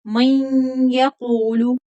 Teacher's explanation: मन यक़ूलु, यहाँ पर इदगाम बागुन्ना होगा।